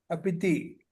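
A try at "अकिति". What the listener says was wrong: అకితి. కితి పితి కాదు, కితి.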